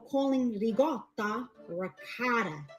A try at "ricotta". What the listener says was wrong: No, it's ricotta. Ricotta. Gotta roll the R, you little bitch. You gotta roll the R. Ricotta. Not ricotta, not ricotta. Ricotta. There's no G in there. It's ricotta, not ricotta. Ricotta.